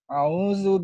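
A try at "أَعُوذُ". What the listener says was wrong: bukan au. Au mah itu mah di hutan. Alif dan ain.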